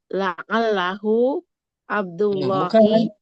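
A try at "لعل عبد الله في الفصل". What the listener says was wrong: Pakai hu, jangan pakai hu, jangan.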